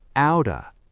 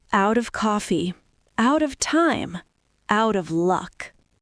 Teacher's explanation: the T sounds like a D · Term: natural linking